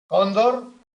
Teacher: el golpe de voz cae en la penúltima es una palabra llana